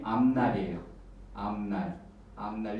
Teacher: 그 다음에 이거 교체 현상이라고 그러거든요. 그 다음에 니은 앞에 있는 비읍은 요 니은의 영향을 받아서 비음화가 된다고 그래요. 미음으로 바뀝니다.